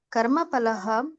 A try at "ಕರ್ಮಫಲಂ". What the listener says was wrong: ಅಲ್ಲಿ ಒಂದನೇ ಲೈನ್ ಅಲ್ಲಿ ಕರ್ಮ ಫಲಂ, ಫಲಹ ಅಲ್ಲ ಕರ್ಮ ಫಲಂ.